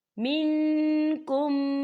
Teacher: فَمَن كَانَ مِنْكُمْ مَرِيضًا، یہاں دیکھیں منکم، یہاں دیکھیں میم ساکن ہے اور میم ساکن کے بعد میم مشدد آ رہا ہے تو یہاں پر ادغام شفوی ہوگا، ہم پچھلے میم کو اگلے میم کے اندر مدغم کر کے پڑھیں گے اور یہاں غنہ بھی ہوگا